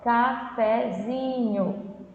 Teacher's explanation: Percebe que o zinho é mais forte, né? Cafezinho, você se prolonga mais, né? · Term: sílaba tônica